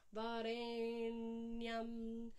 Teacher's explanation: Dot underneath the N means a retroflex position, so the tongue has to be up, pointing towards the roof of the mouth.